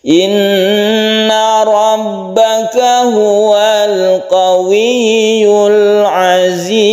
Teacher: Apabila ada mat tabi'i, ini mat tabi'i atau mat asli bertemu dengan huruf yang disukun ketika waqaf, maka kita membacanya mat arid disukun panjangnya 1, 2 atau 3 alif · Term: mat arid lisukun